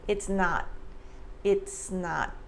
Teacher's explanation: the s in its links to the n sound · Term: linking and blending